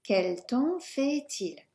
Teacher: Run the T into the next part of il.